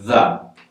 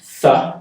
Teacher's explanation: two of the same sounds, that th sound, but one is voice, one is non-voice.